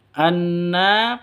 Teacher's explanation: dengung 2 ketukan ya gunnahnya. Terus nanya panjang 2 ketukan. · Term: gunnah musyaddadah